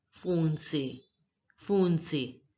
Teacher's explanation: in this word, ON sound means the nasal sound and it has to be pronounced as O.